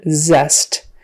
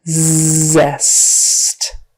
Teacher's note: It's got a Z on the front and an S in the middle. Remember, the Z is just the voiced version of S. So your Z vibrates, the S does not.